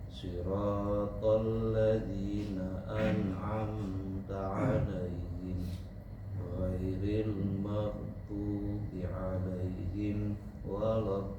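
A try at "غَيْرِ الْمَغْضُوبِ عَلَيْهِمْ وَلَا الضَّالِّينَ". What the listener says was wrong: Jangan putus Pak.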